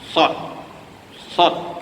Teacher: Ketika kita sebut huruf sad, dia bukan di pangkal lidah, tengah-tengah tu, antara tengah dan hujung.